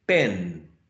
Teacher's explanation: But when you say pen, you're preparing yourself, the oral cavity and all this phonological process is preparing for the following sound, which is a nasal sound. So the sound e is not the same as when you say pe, as when you say pen. It's getting nasalized, right? So this influence is called assimilation because one characteristic is influencing, right, another sound.